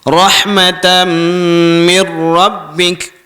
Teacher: Walaupun nun tu tak ada sukun, tapi kita tak dengung juga. Sebabnya selepas tu dia bertemu dengan huruf ra.